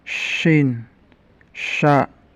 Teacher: suara anginnya menyebar luas di dalam rongga mulut. Punya sifat tafashi.